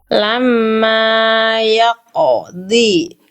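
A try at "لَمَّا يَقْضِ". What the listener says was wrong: Oke, mim tasdidnya dulu, jangan lupa tahan. Ada gunnah ya. Lamma yaqdi.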